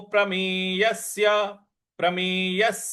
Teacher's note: य के बाद जो आधा स है उस पर भी हमको आघात देना है